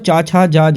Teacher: स्पर्श संघर्षी ध्वनियाँ भी कहा जाता है